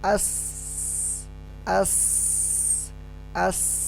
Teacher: Tidak ada getaran karena pita suaranya terbuka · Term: huruf hamas